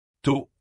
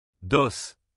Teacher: Dos avec D. La seule différence, c'est la vibration de la gorge.